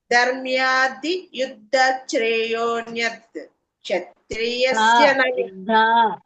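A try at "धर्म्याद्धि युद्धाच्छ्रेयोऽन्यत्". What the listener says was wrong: నాకు దీర్ఘ యుద్ధ యుద్ధ అని అనండి, దీర్ఘం దిగాలి.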